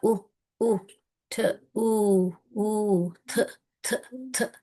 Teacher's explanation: Again அன்வாய்ஸ்ட் டிஹெச் தான் வருது.